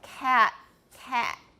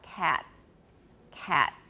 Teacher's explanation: I've already gone down to the creak, so there's a glottal stop. Cat, cat. I still have a T. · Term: glottalized final stop